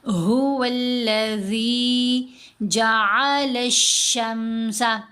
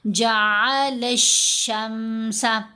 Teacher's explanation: هو الذی جعل الشمس، لام کو ہم نے شین کے ساتھ ملایا، جعل الشمس، الف اور لام دونوں نہیں پڑھے گے کیونکہ شین حروف شمسی میں سے ہے، اور جب بھی حروف شمسی سے پہلے الف اور لام 2 حروف اکٹھے آئیں تو یہ دونوں خاموش ہو جاتے ہیں۔